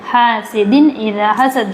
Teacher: آواز کو یہاں تنوین کی چھپانا نہیں ہوگا، آپ کو ظاہر کر کے پڑھنا ہوگا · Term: اظہار